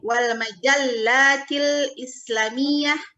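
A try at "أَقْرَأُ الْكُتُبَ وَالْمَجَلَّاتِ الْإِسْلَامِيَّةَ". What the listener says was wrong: Salah intonasinya, titik di sana. Aqra'ul kutuba wal majallatil islamiyah. Ulang lagi.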